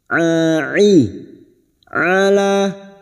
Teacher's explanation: huruf Ain yang memiliki sifat tawasud dan jahr